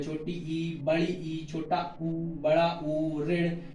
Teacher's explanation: छोटी ई, बड़ी ई, छोटा ऊ, बड़ा ऊ, ऋण, इसमें मुख बंद सा रहता है, वो होता है सावृत।